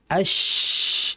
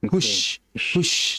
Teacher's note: Ketika tengah lidah itu naik ke langit-langit atas, udara ini akan terdengar jelas. Bisa dikatakan udara, bisa dikatakan desisan yang kuat. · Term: tafasyi